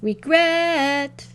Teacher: of that word is longer and louder when I call it gret is the longer louder side